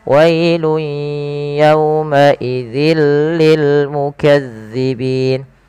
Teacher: cara membacanya itu memasukkan tanwinnya ke huruf lam